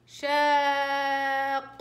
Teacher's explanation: عملت لكم ست حركات، يعني هاي ست حركات ضروري مع النبر على القاف عشان أوضح القاف الأولى الساكنة